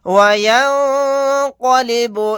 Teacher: نون ساکن کے بعد قاف آ گیا, یہاں پر اخفا کا قاعدہ ہوگا. قاف کو یہاں پر موٹا یعنی پر پڑھیں گے. لام کے اوپر کھڑا زبر ہے, کھڑا زبر بھی حروف مدہ کی برابر ہوتا ہے, یعنی حروف مدہ کے قائم مقام ہوتا ہے.